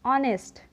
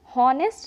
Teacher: इसे हम हॉनेस्ट नहीं ऑनेस्ट पढ़ते हैं, यहाँ पे एच साइलेंट हो जाता है